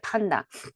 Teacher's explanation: 판다의 푸는요 대기음이죠. 강세가 들어가니까.